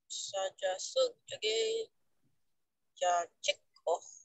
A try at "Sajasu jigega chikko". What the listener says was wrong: Yeah, good. Tus. Got that H on there, so it's good.